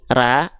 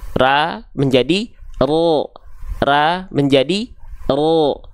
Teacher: huruf ro itu pangkal lidahnya nih, lidah terdalamnya naik ke arah langit-langit. Nggak nempel tapi naik. Ya, pangkal lidahnya mengarah ke langit-langit tapi tidak nempel. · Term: pangkal lidah naik